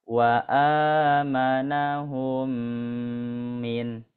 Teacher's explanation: mim yang bersukun bertemu dengan mim nah yang bertasdid ini ya bertasdid Nah itu digunahkan dan gunahnya dua harakat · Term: idgam mislin